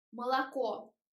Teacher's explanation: Unstressed O sounds like sound shwa. · They write a here, but it is incorrect because we don't say молоко. Letter a, sound a, is wide, but when we say молоко, mouth is more closed · The accent goes on the last o here.